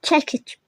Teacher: Söz sonunda c samiti özünün kar qarşılığı ilə tələffüz olunur.